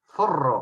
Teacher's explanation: Es una consonante diferente, por supuesto, pero nosotros los peruanos lo pronunciamos como si fuera S